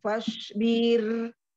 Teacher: Jangan dipanjangkan, jangan bir. Fasbir. Fasbir, bir.